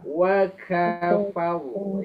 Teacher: Wa kafaru ya dibaca dengan tafkhim ya. Dibaca dengan tafkhim dibaca dengan tebal ya. Karena huruf rnya sendiri berharakat fathah disukunkan.